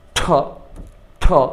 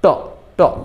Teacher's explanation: যদি বলি ঠ ঠ বাতাস হয়েছে, তাহলে সেটা হলো মহাপ্রাণ। তাহলে বাতাস হবে যেটা মহাপ্রাণ সেটা, বাতাস হবে না যেটা অল্প প্রাণ সেটা